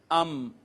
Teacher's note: دونوں ہونٹوں کا جو باہر والا خشک حصہ ملا ہے، باہر والا خشک حصہ ملا ہے، وہاں سے میم ادا ہوئی ہے